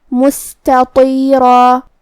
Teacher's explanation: تا اور طا کی ادائیگی ایک ہی جگہ سے ہے اور وہ ہے زبان کی نوک اور اوپر کے دانتوں کی جڑ سے، لیکن حرف التا حروف الترقیق میں سے ہے اور طا حروف التفخیم میں سے ہے. تو ہم تا کو ہلکی آواز میں پڑھیں گے اور طا کو بھاری آواز میں. · پھر اس کے بعد حرف التا ہے اور اس کے بعد حرف الطا ہے. تا اور طا کی ادائیگی ایک ہی جگہ سے ہے اور وہ ہے زبان کی نوک اور اوپر کے دانتوں کی جڑ سے، لیکن حرف التا حروف الترقیق میں سے ہے اور طا حروف التفخیم میں سے ہے.